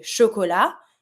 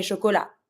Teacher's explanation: For example, when I say chocolat, I'm not pronouncing the T. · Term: The T is mute